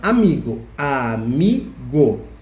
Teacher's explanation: Amigo tem a sílaba mais forte no mi. E é uma palavra paroxítona porque a penúltima sílaba é a mais forte.